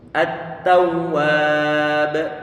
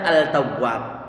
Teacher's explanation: Ada sebagian di antara ulama masuk dalam kategori idgham mutajanisain. Lam ini perlu untuk diidghamkan pada huruf ta'nya. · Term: idgham mutaqaribain